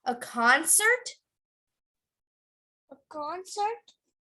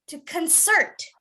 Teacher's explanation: to concert correct so and now you would emphasize the beginning but for a verb you would emphasize the end